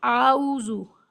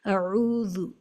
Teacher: پہلے حرف کو بالکل بھی نہیں کھینچنا ہے